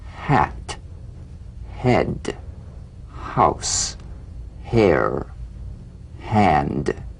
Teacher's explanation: h unvoiced glottal consonant like a whisper of wind · the sound that follows play the h gently without excess breath feel nothing more than a slight hesitation before the vowel · Unvoiced, glottal consonant. Like a whisper of wind, the H hints at the vowel to come. Sigh in a whisper while the lips take the form of the sound that follows. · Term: the gentle H